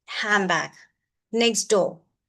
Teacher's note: N becomes M. So ND, D is dropped and N is changing to M. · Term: Dropping sounds